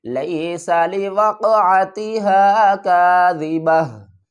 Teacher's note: کس طرح، اس تا کو بھی ڈراپ کر دیں گے، اوپر تنوین کو بھی ڈراپ کر دیں گے، ہا کو ساکن کر دیں گے، لیس لوقعتها کاذبہ، قاف کے اوپر قلقلہ کریں گے، قاف کے اوپر یہ دال نما شکل ہے اور قاف ساکن ہے، موٹا بھی پڑھیں گے اور قلقلہ بھی کریں گے